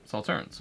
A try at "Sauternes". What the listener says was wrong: Is it Sauterne or is it Sauternes? I think it's Sauterne. Like Sauterne, you don't say the S. Sauterne. No S, correct?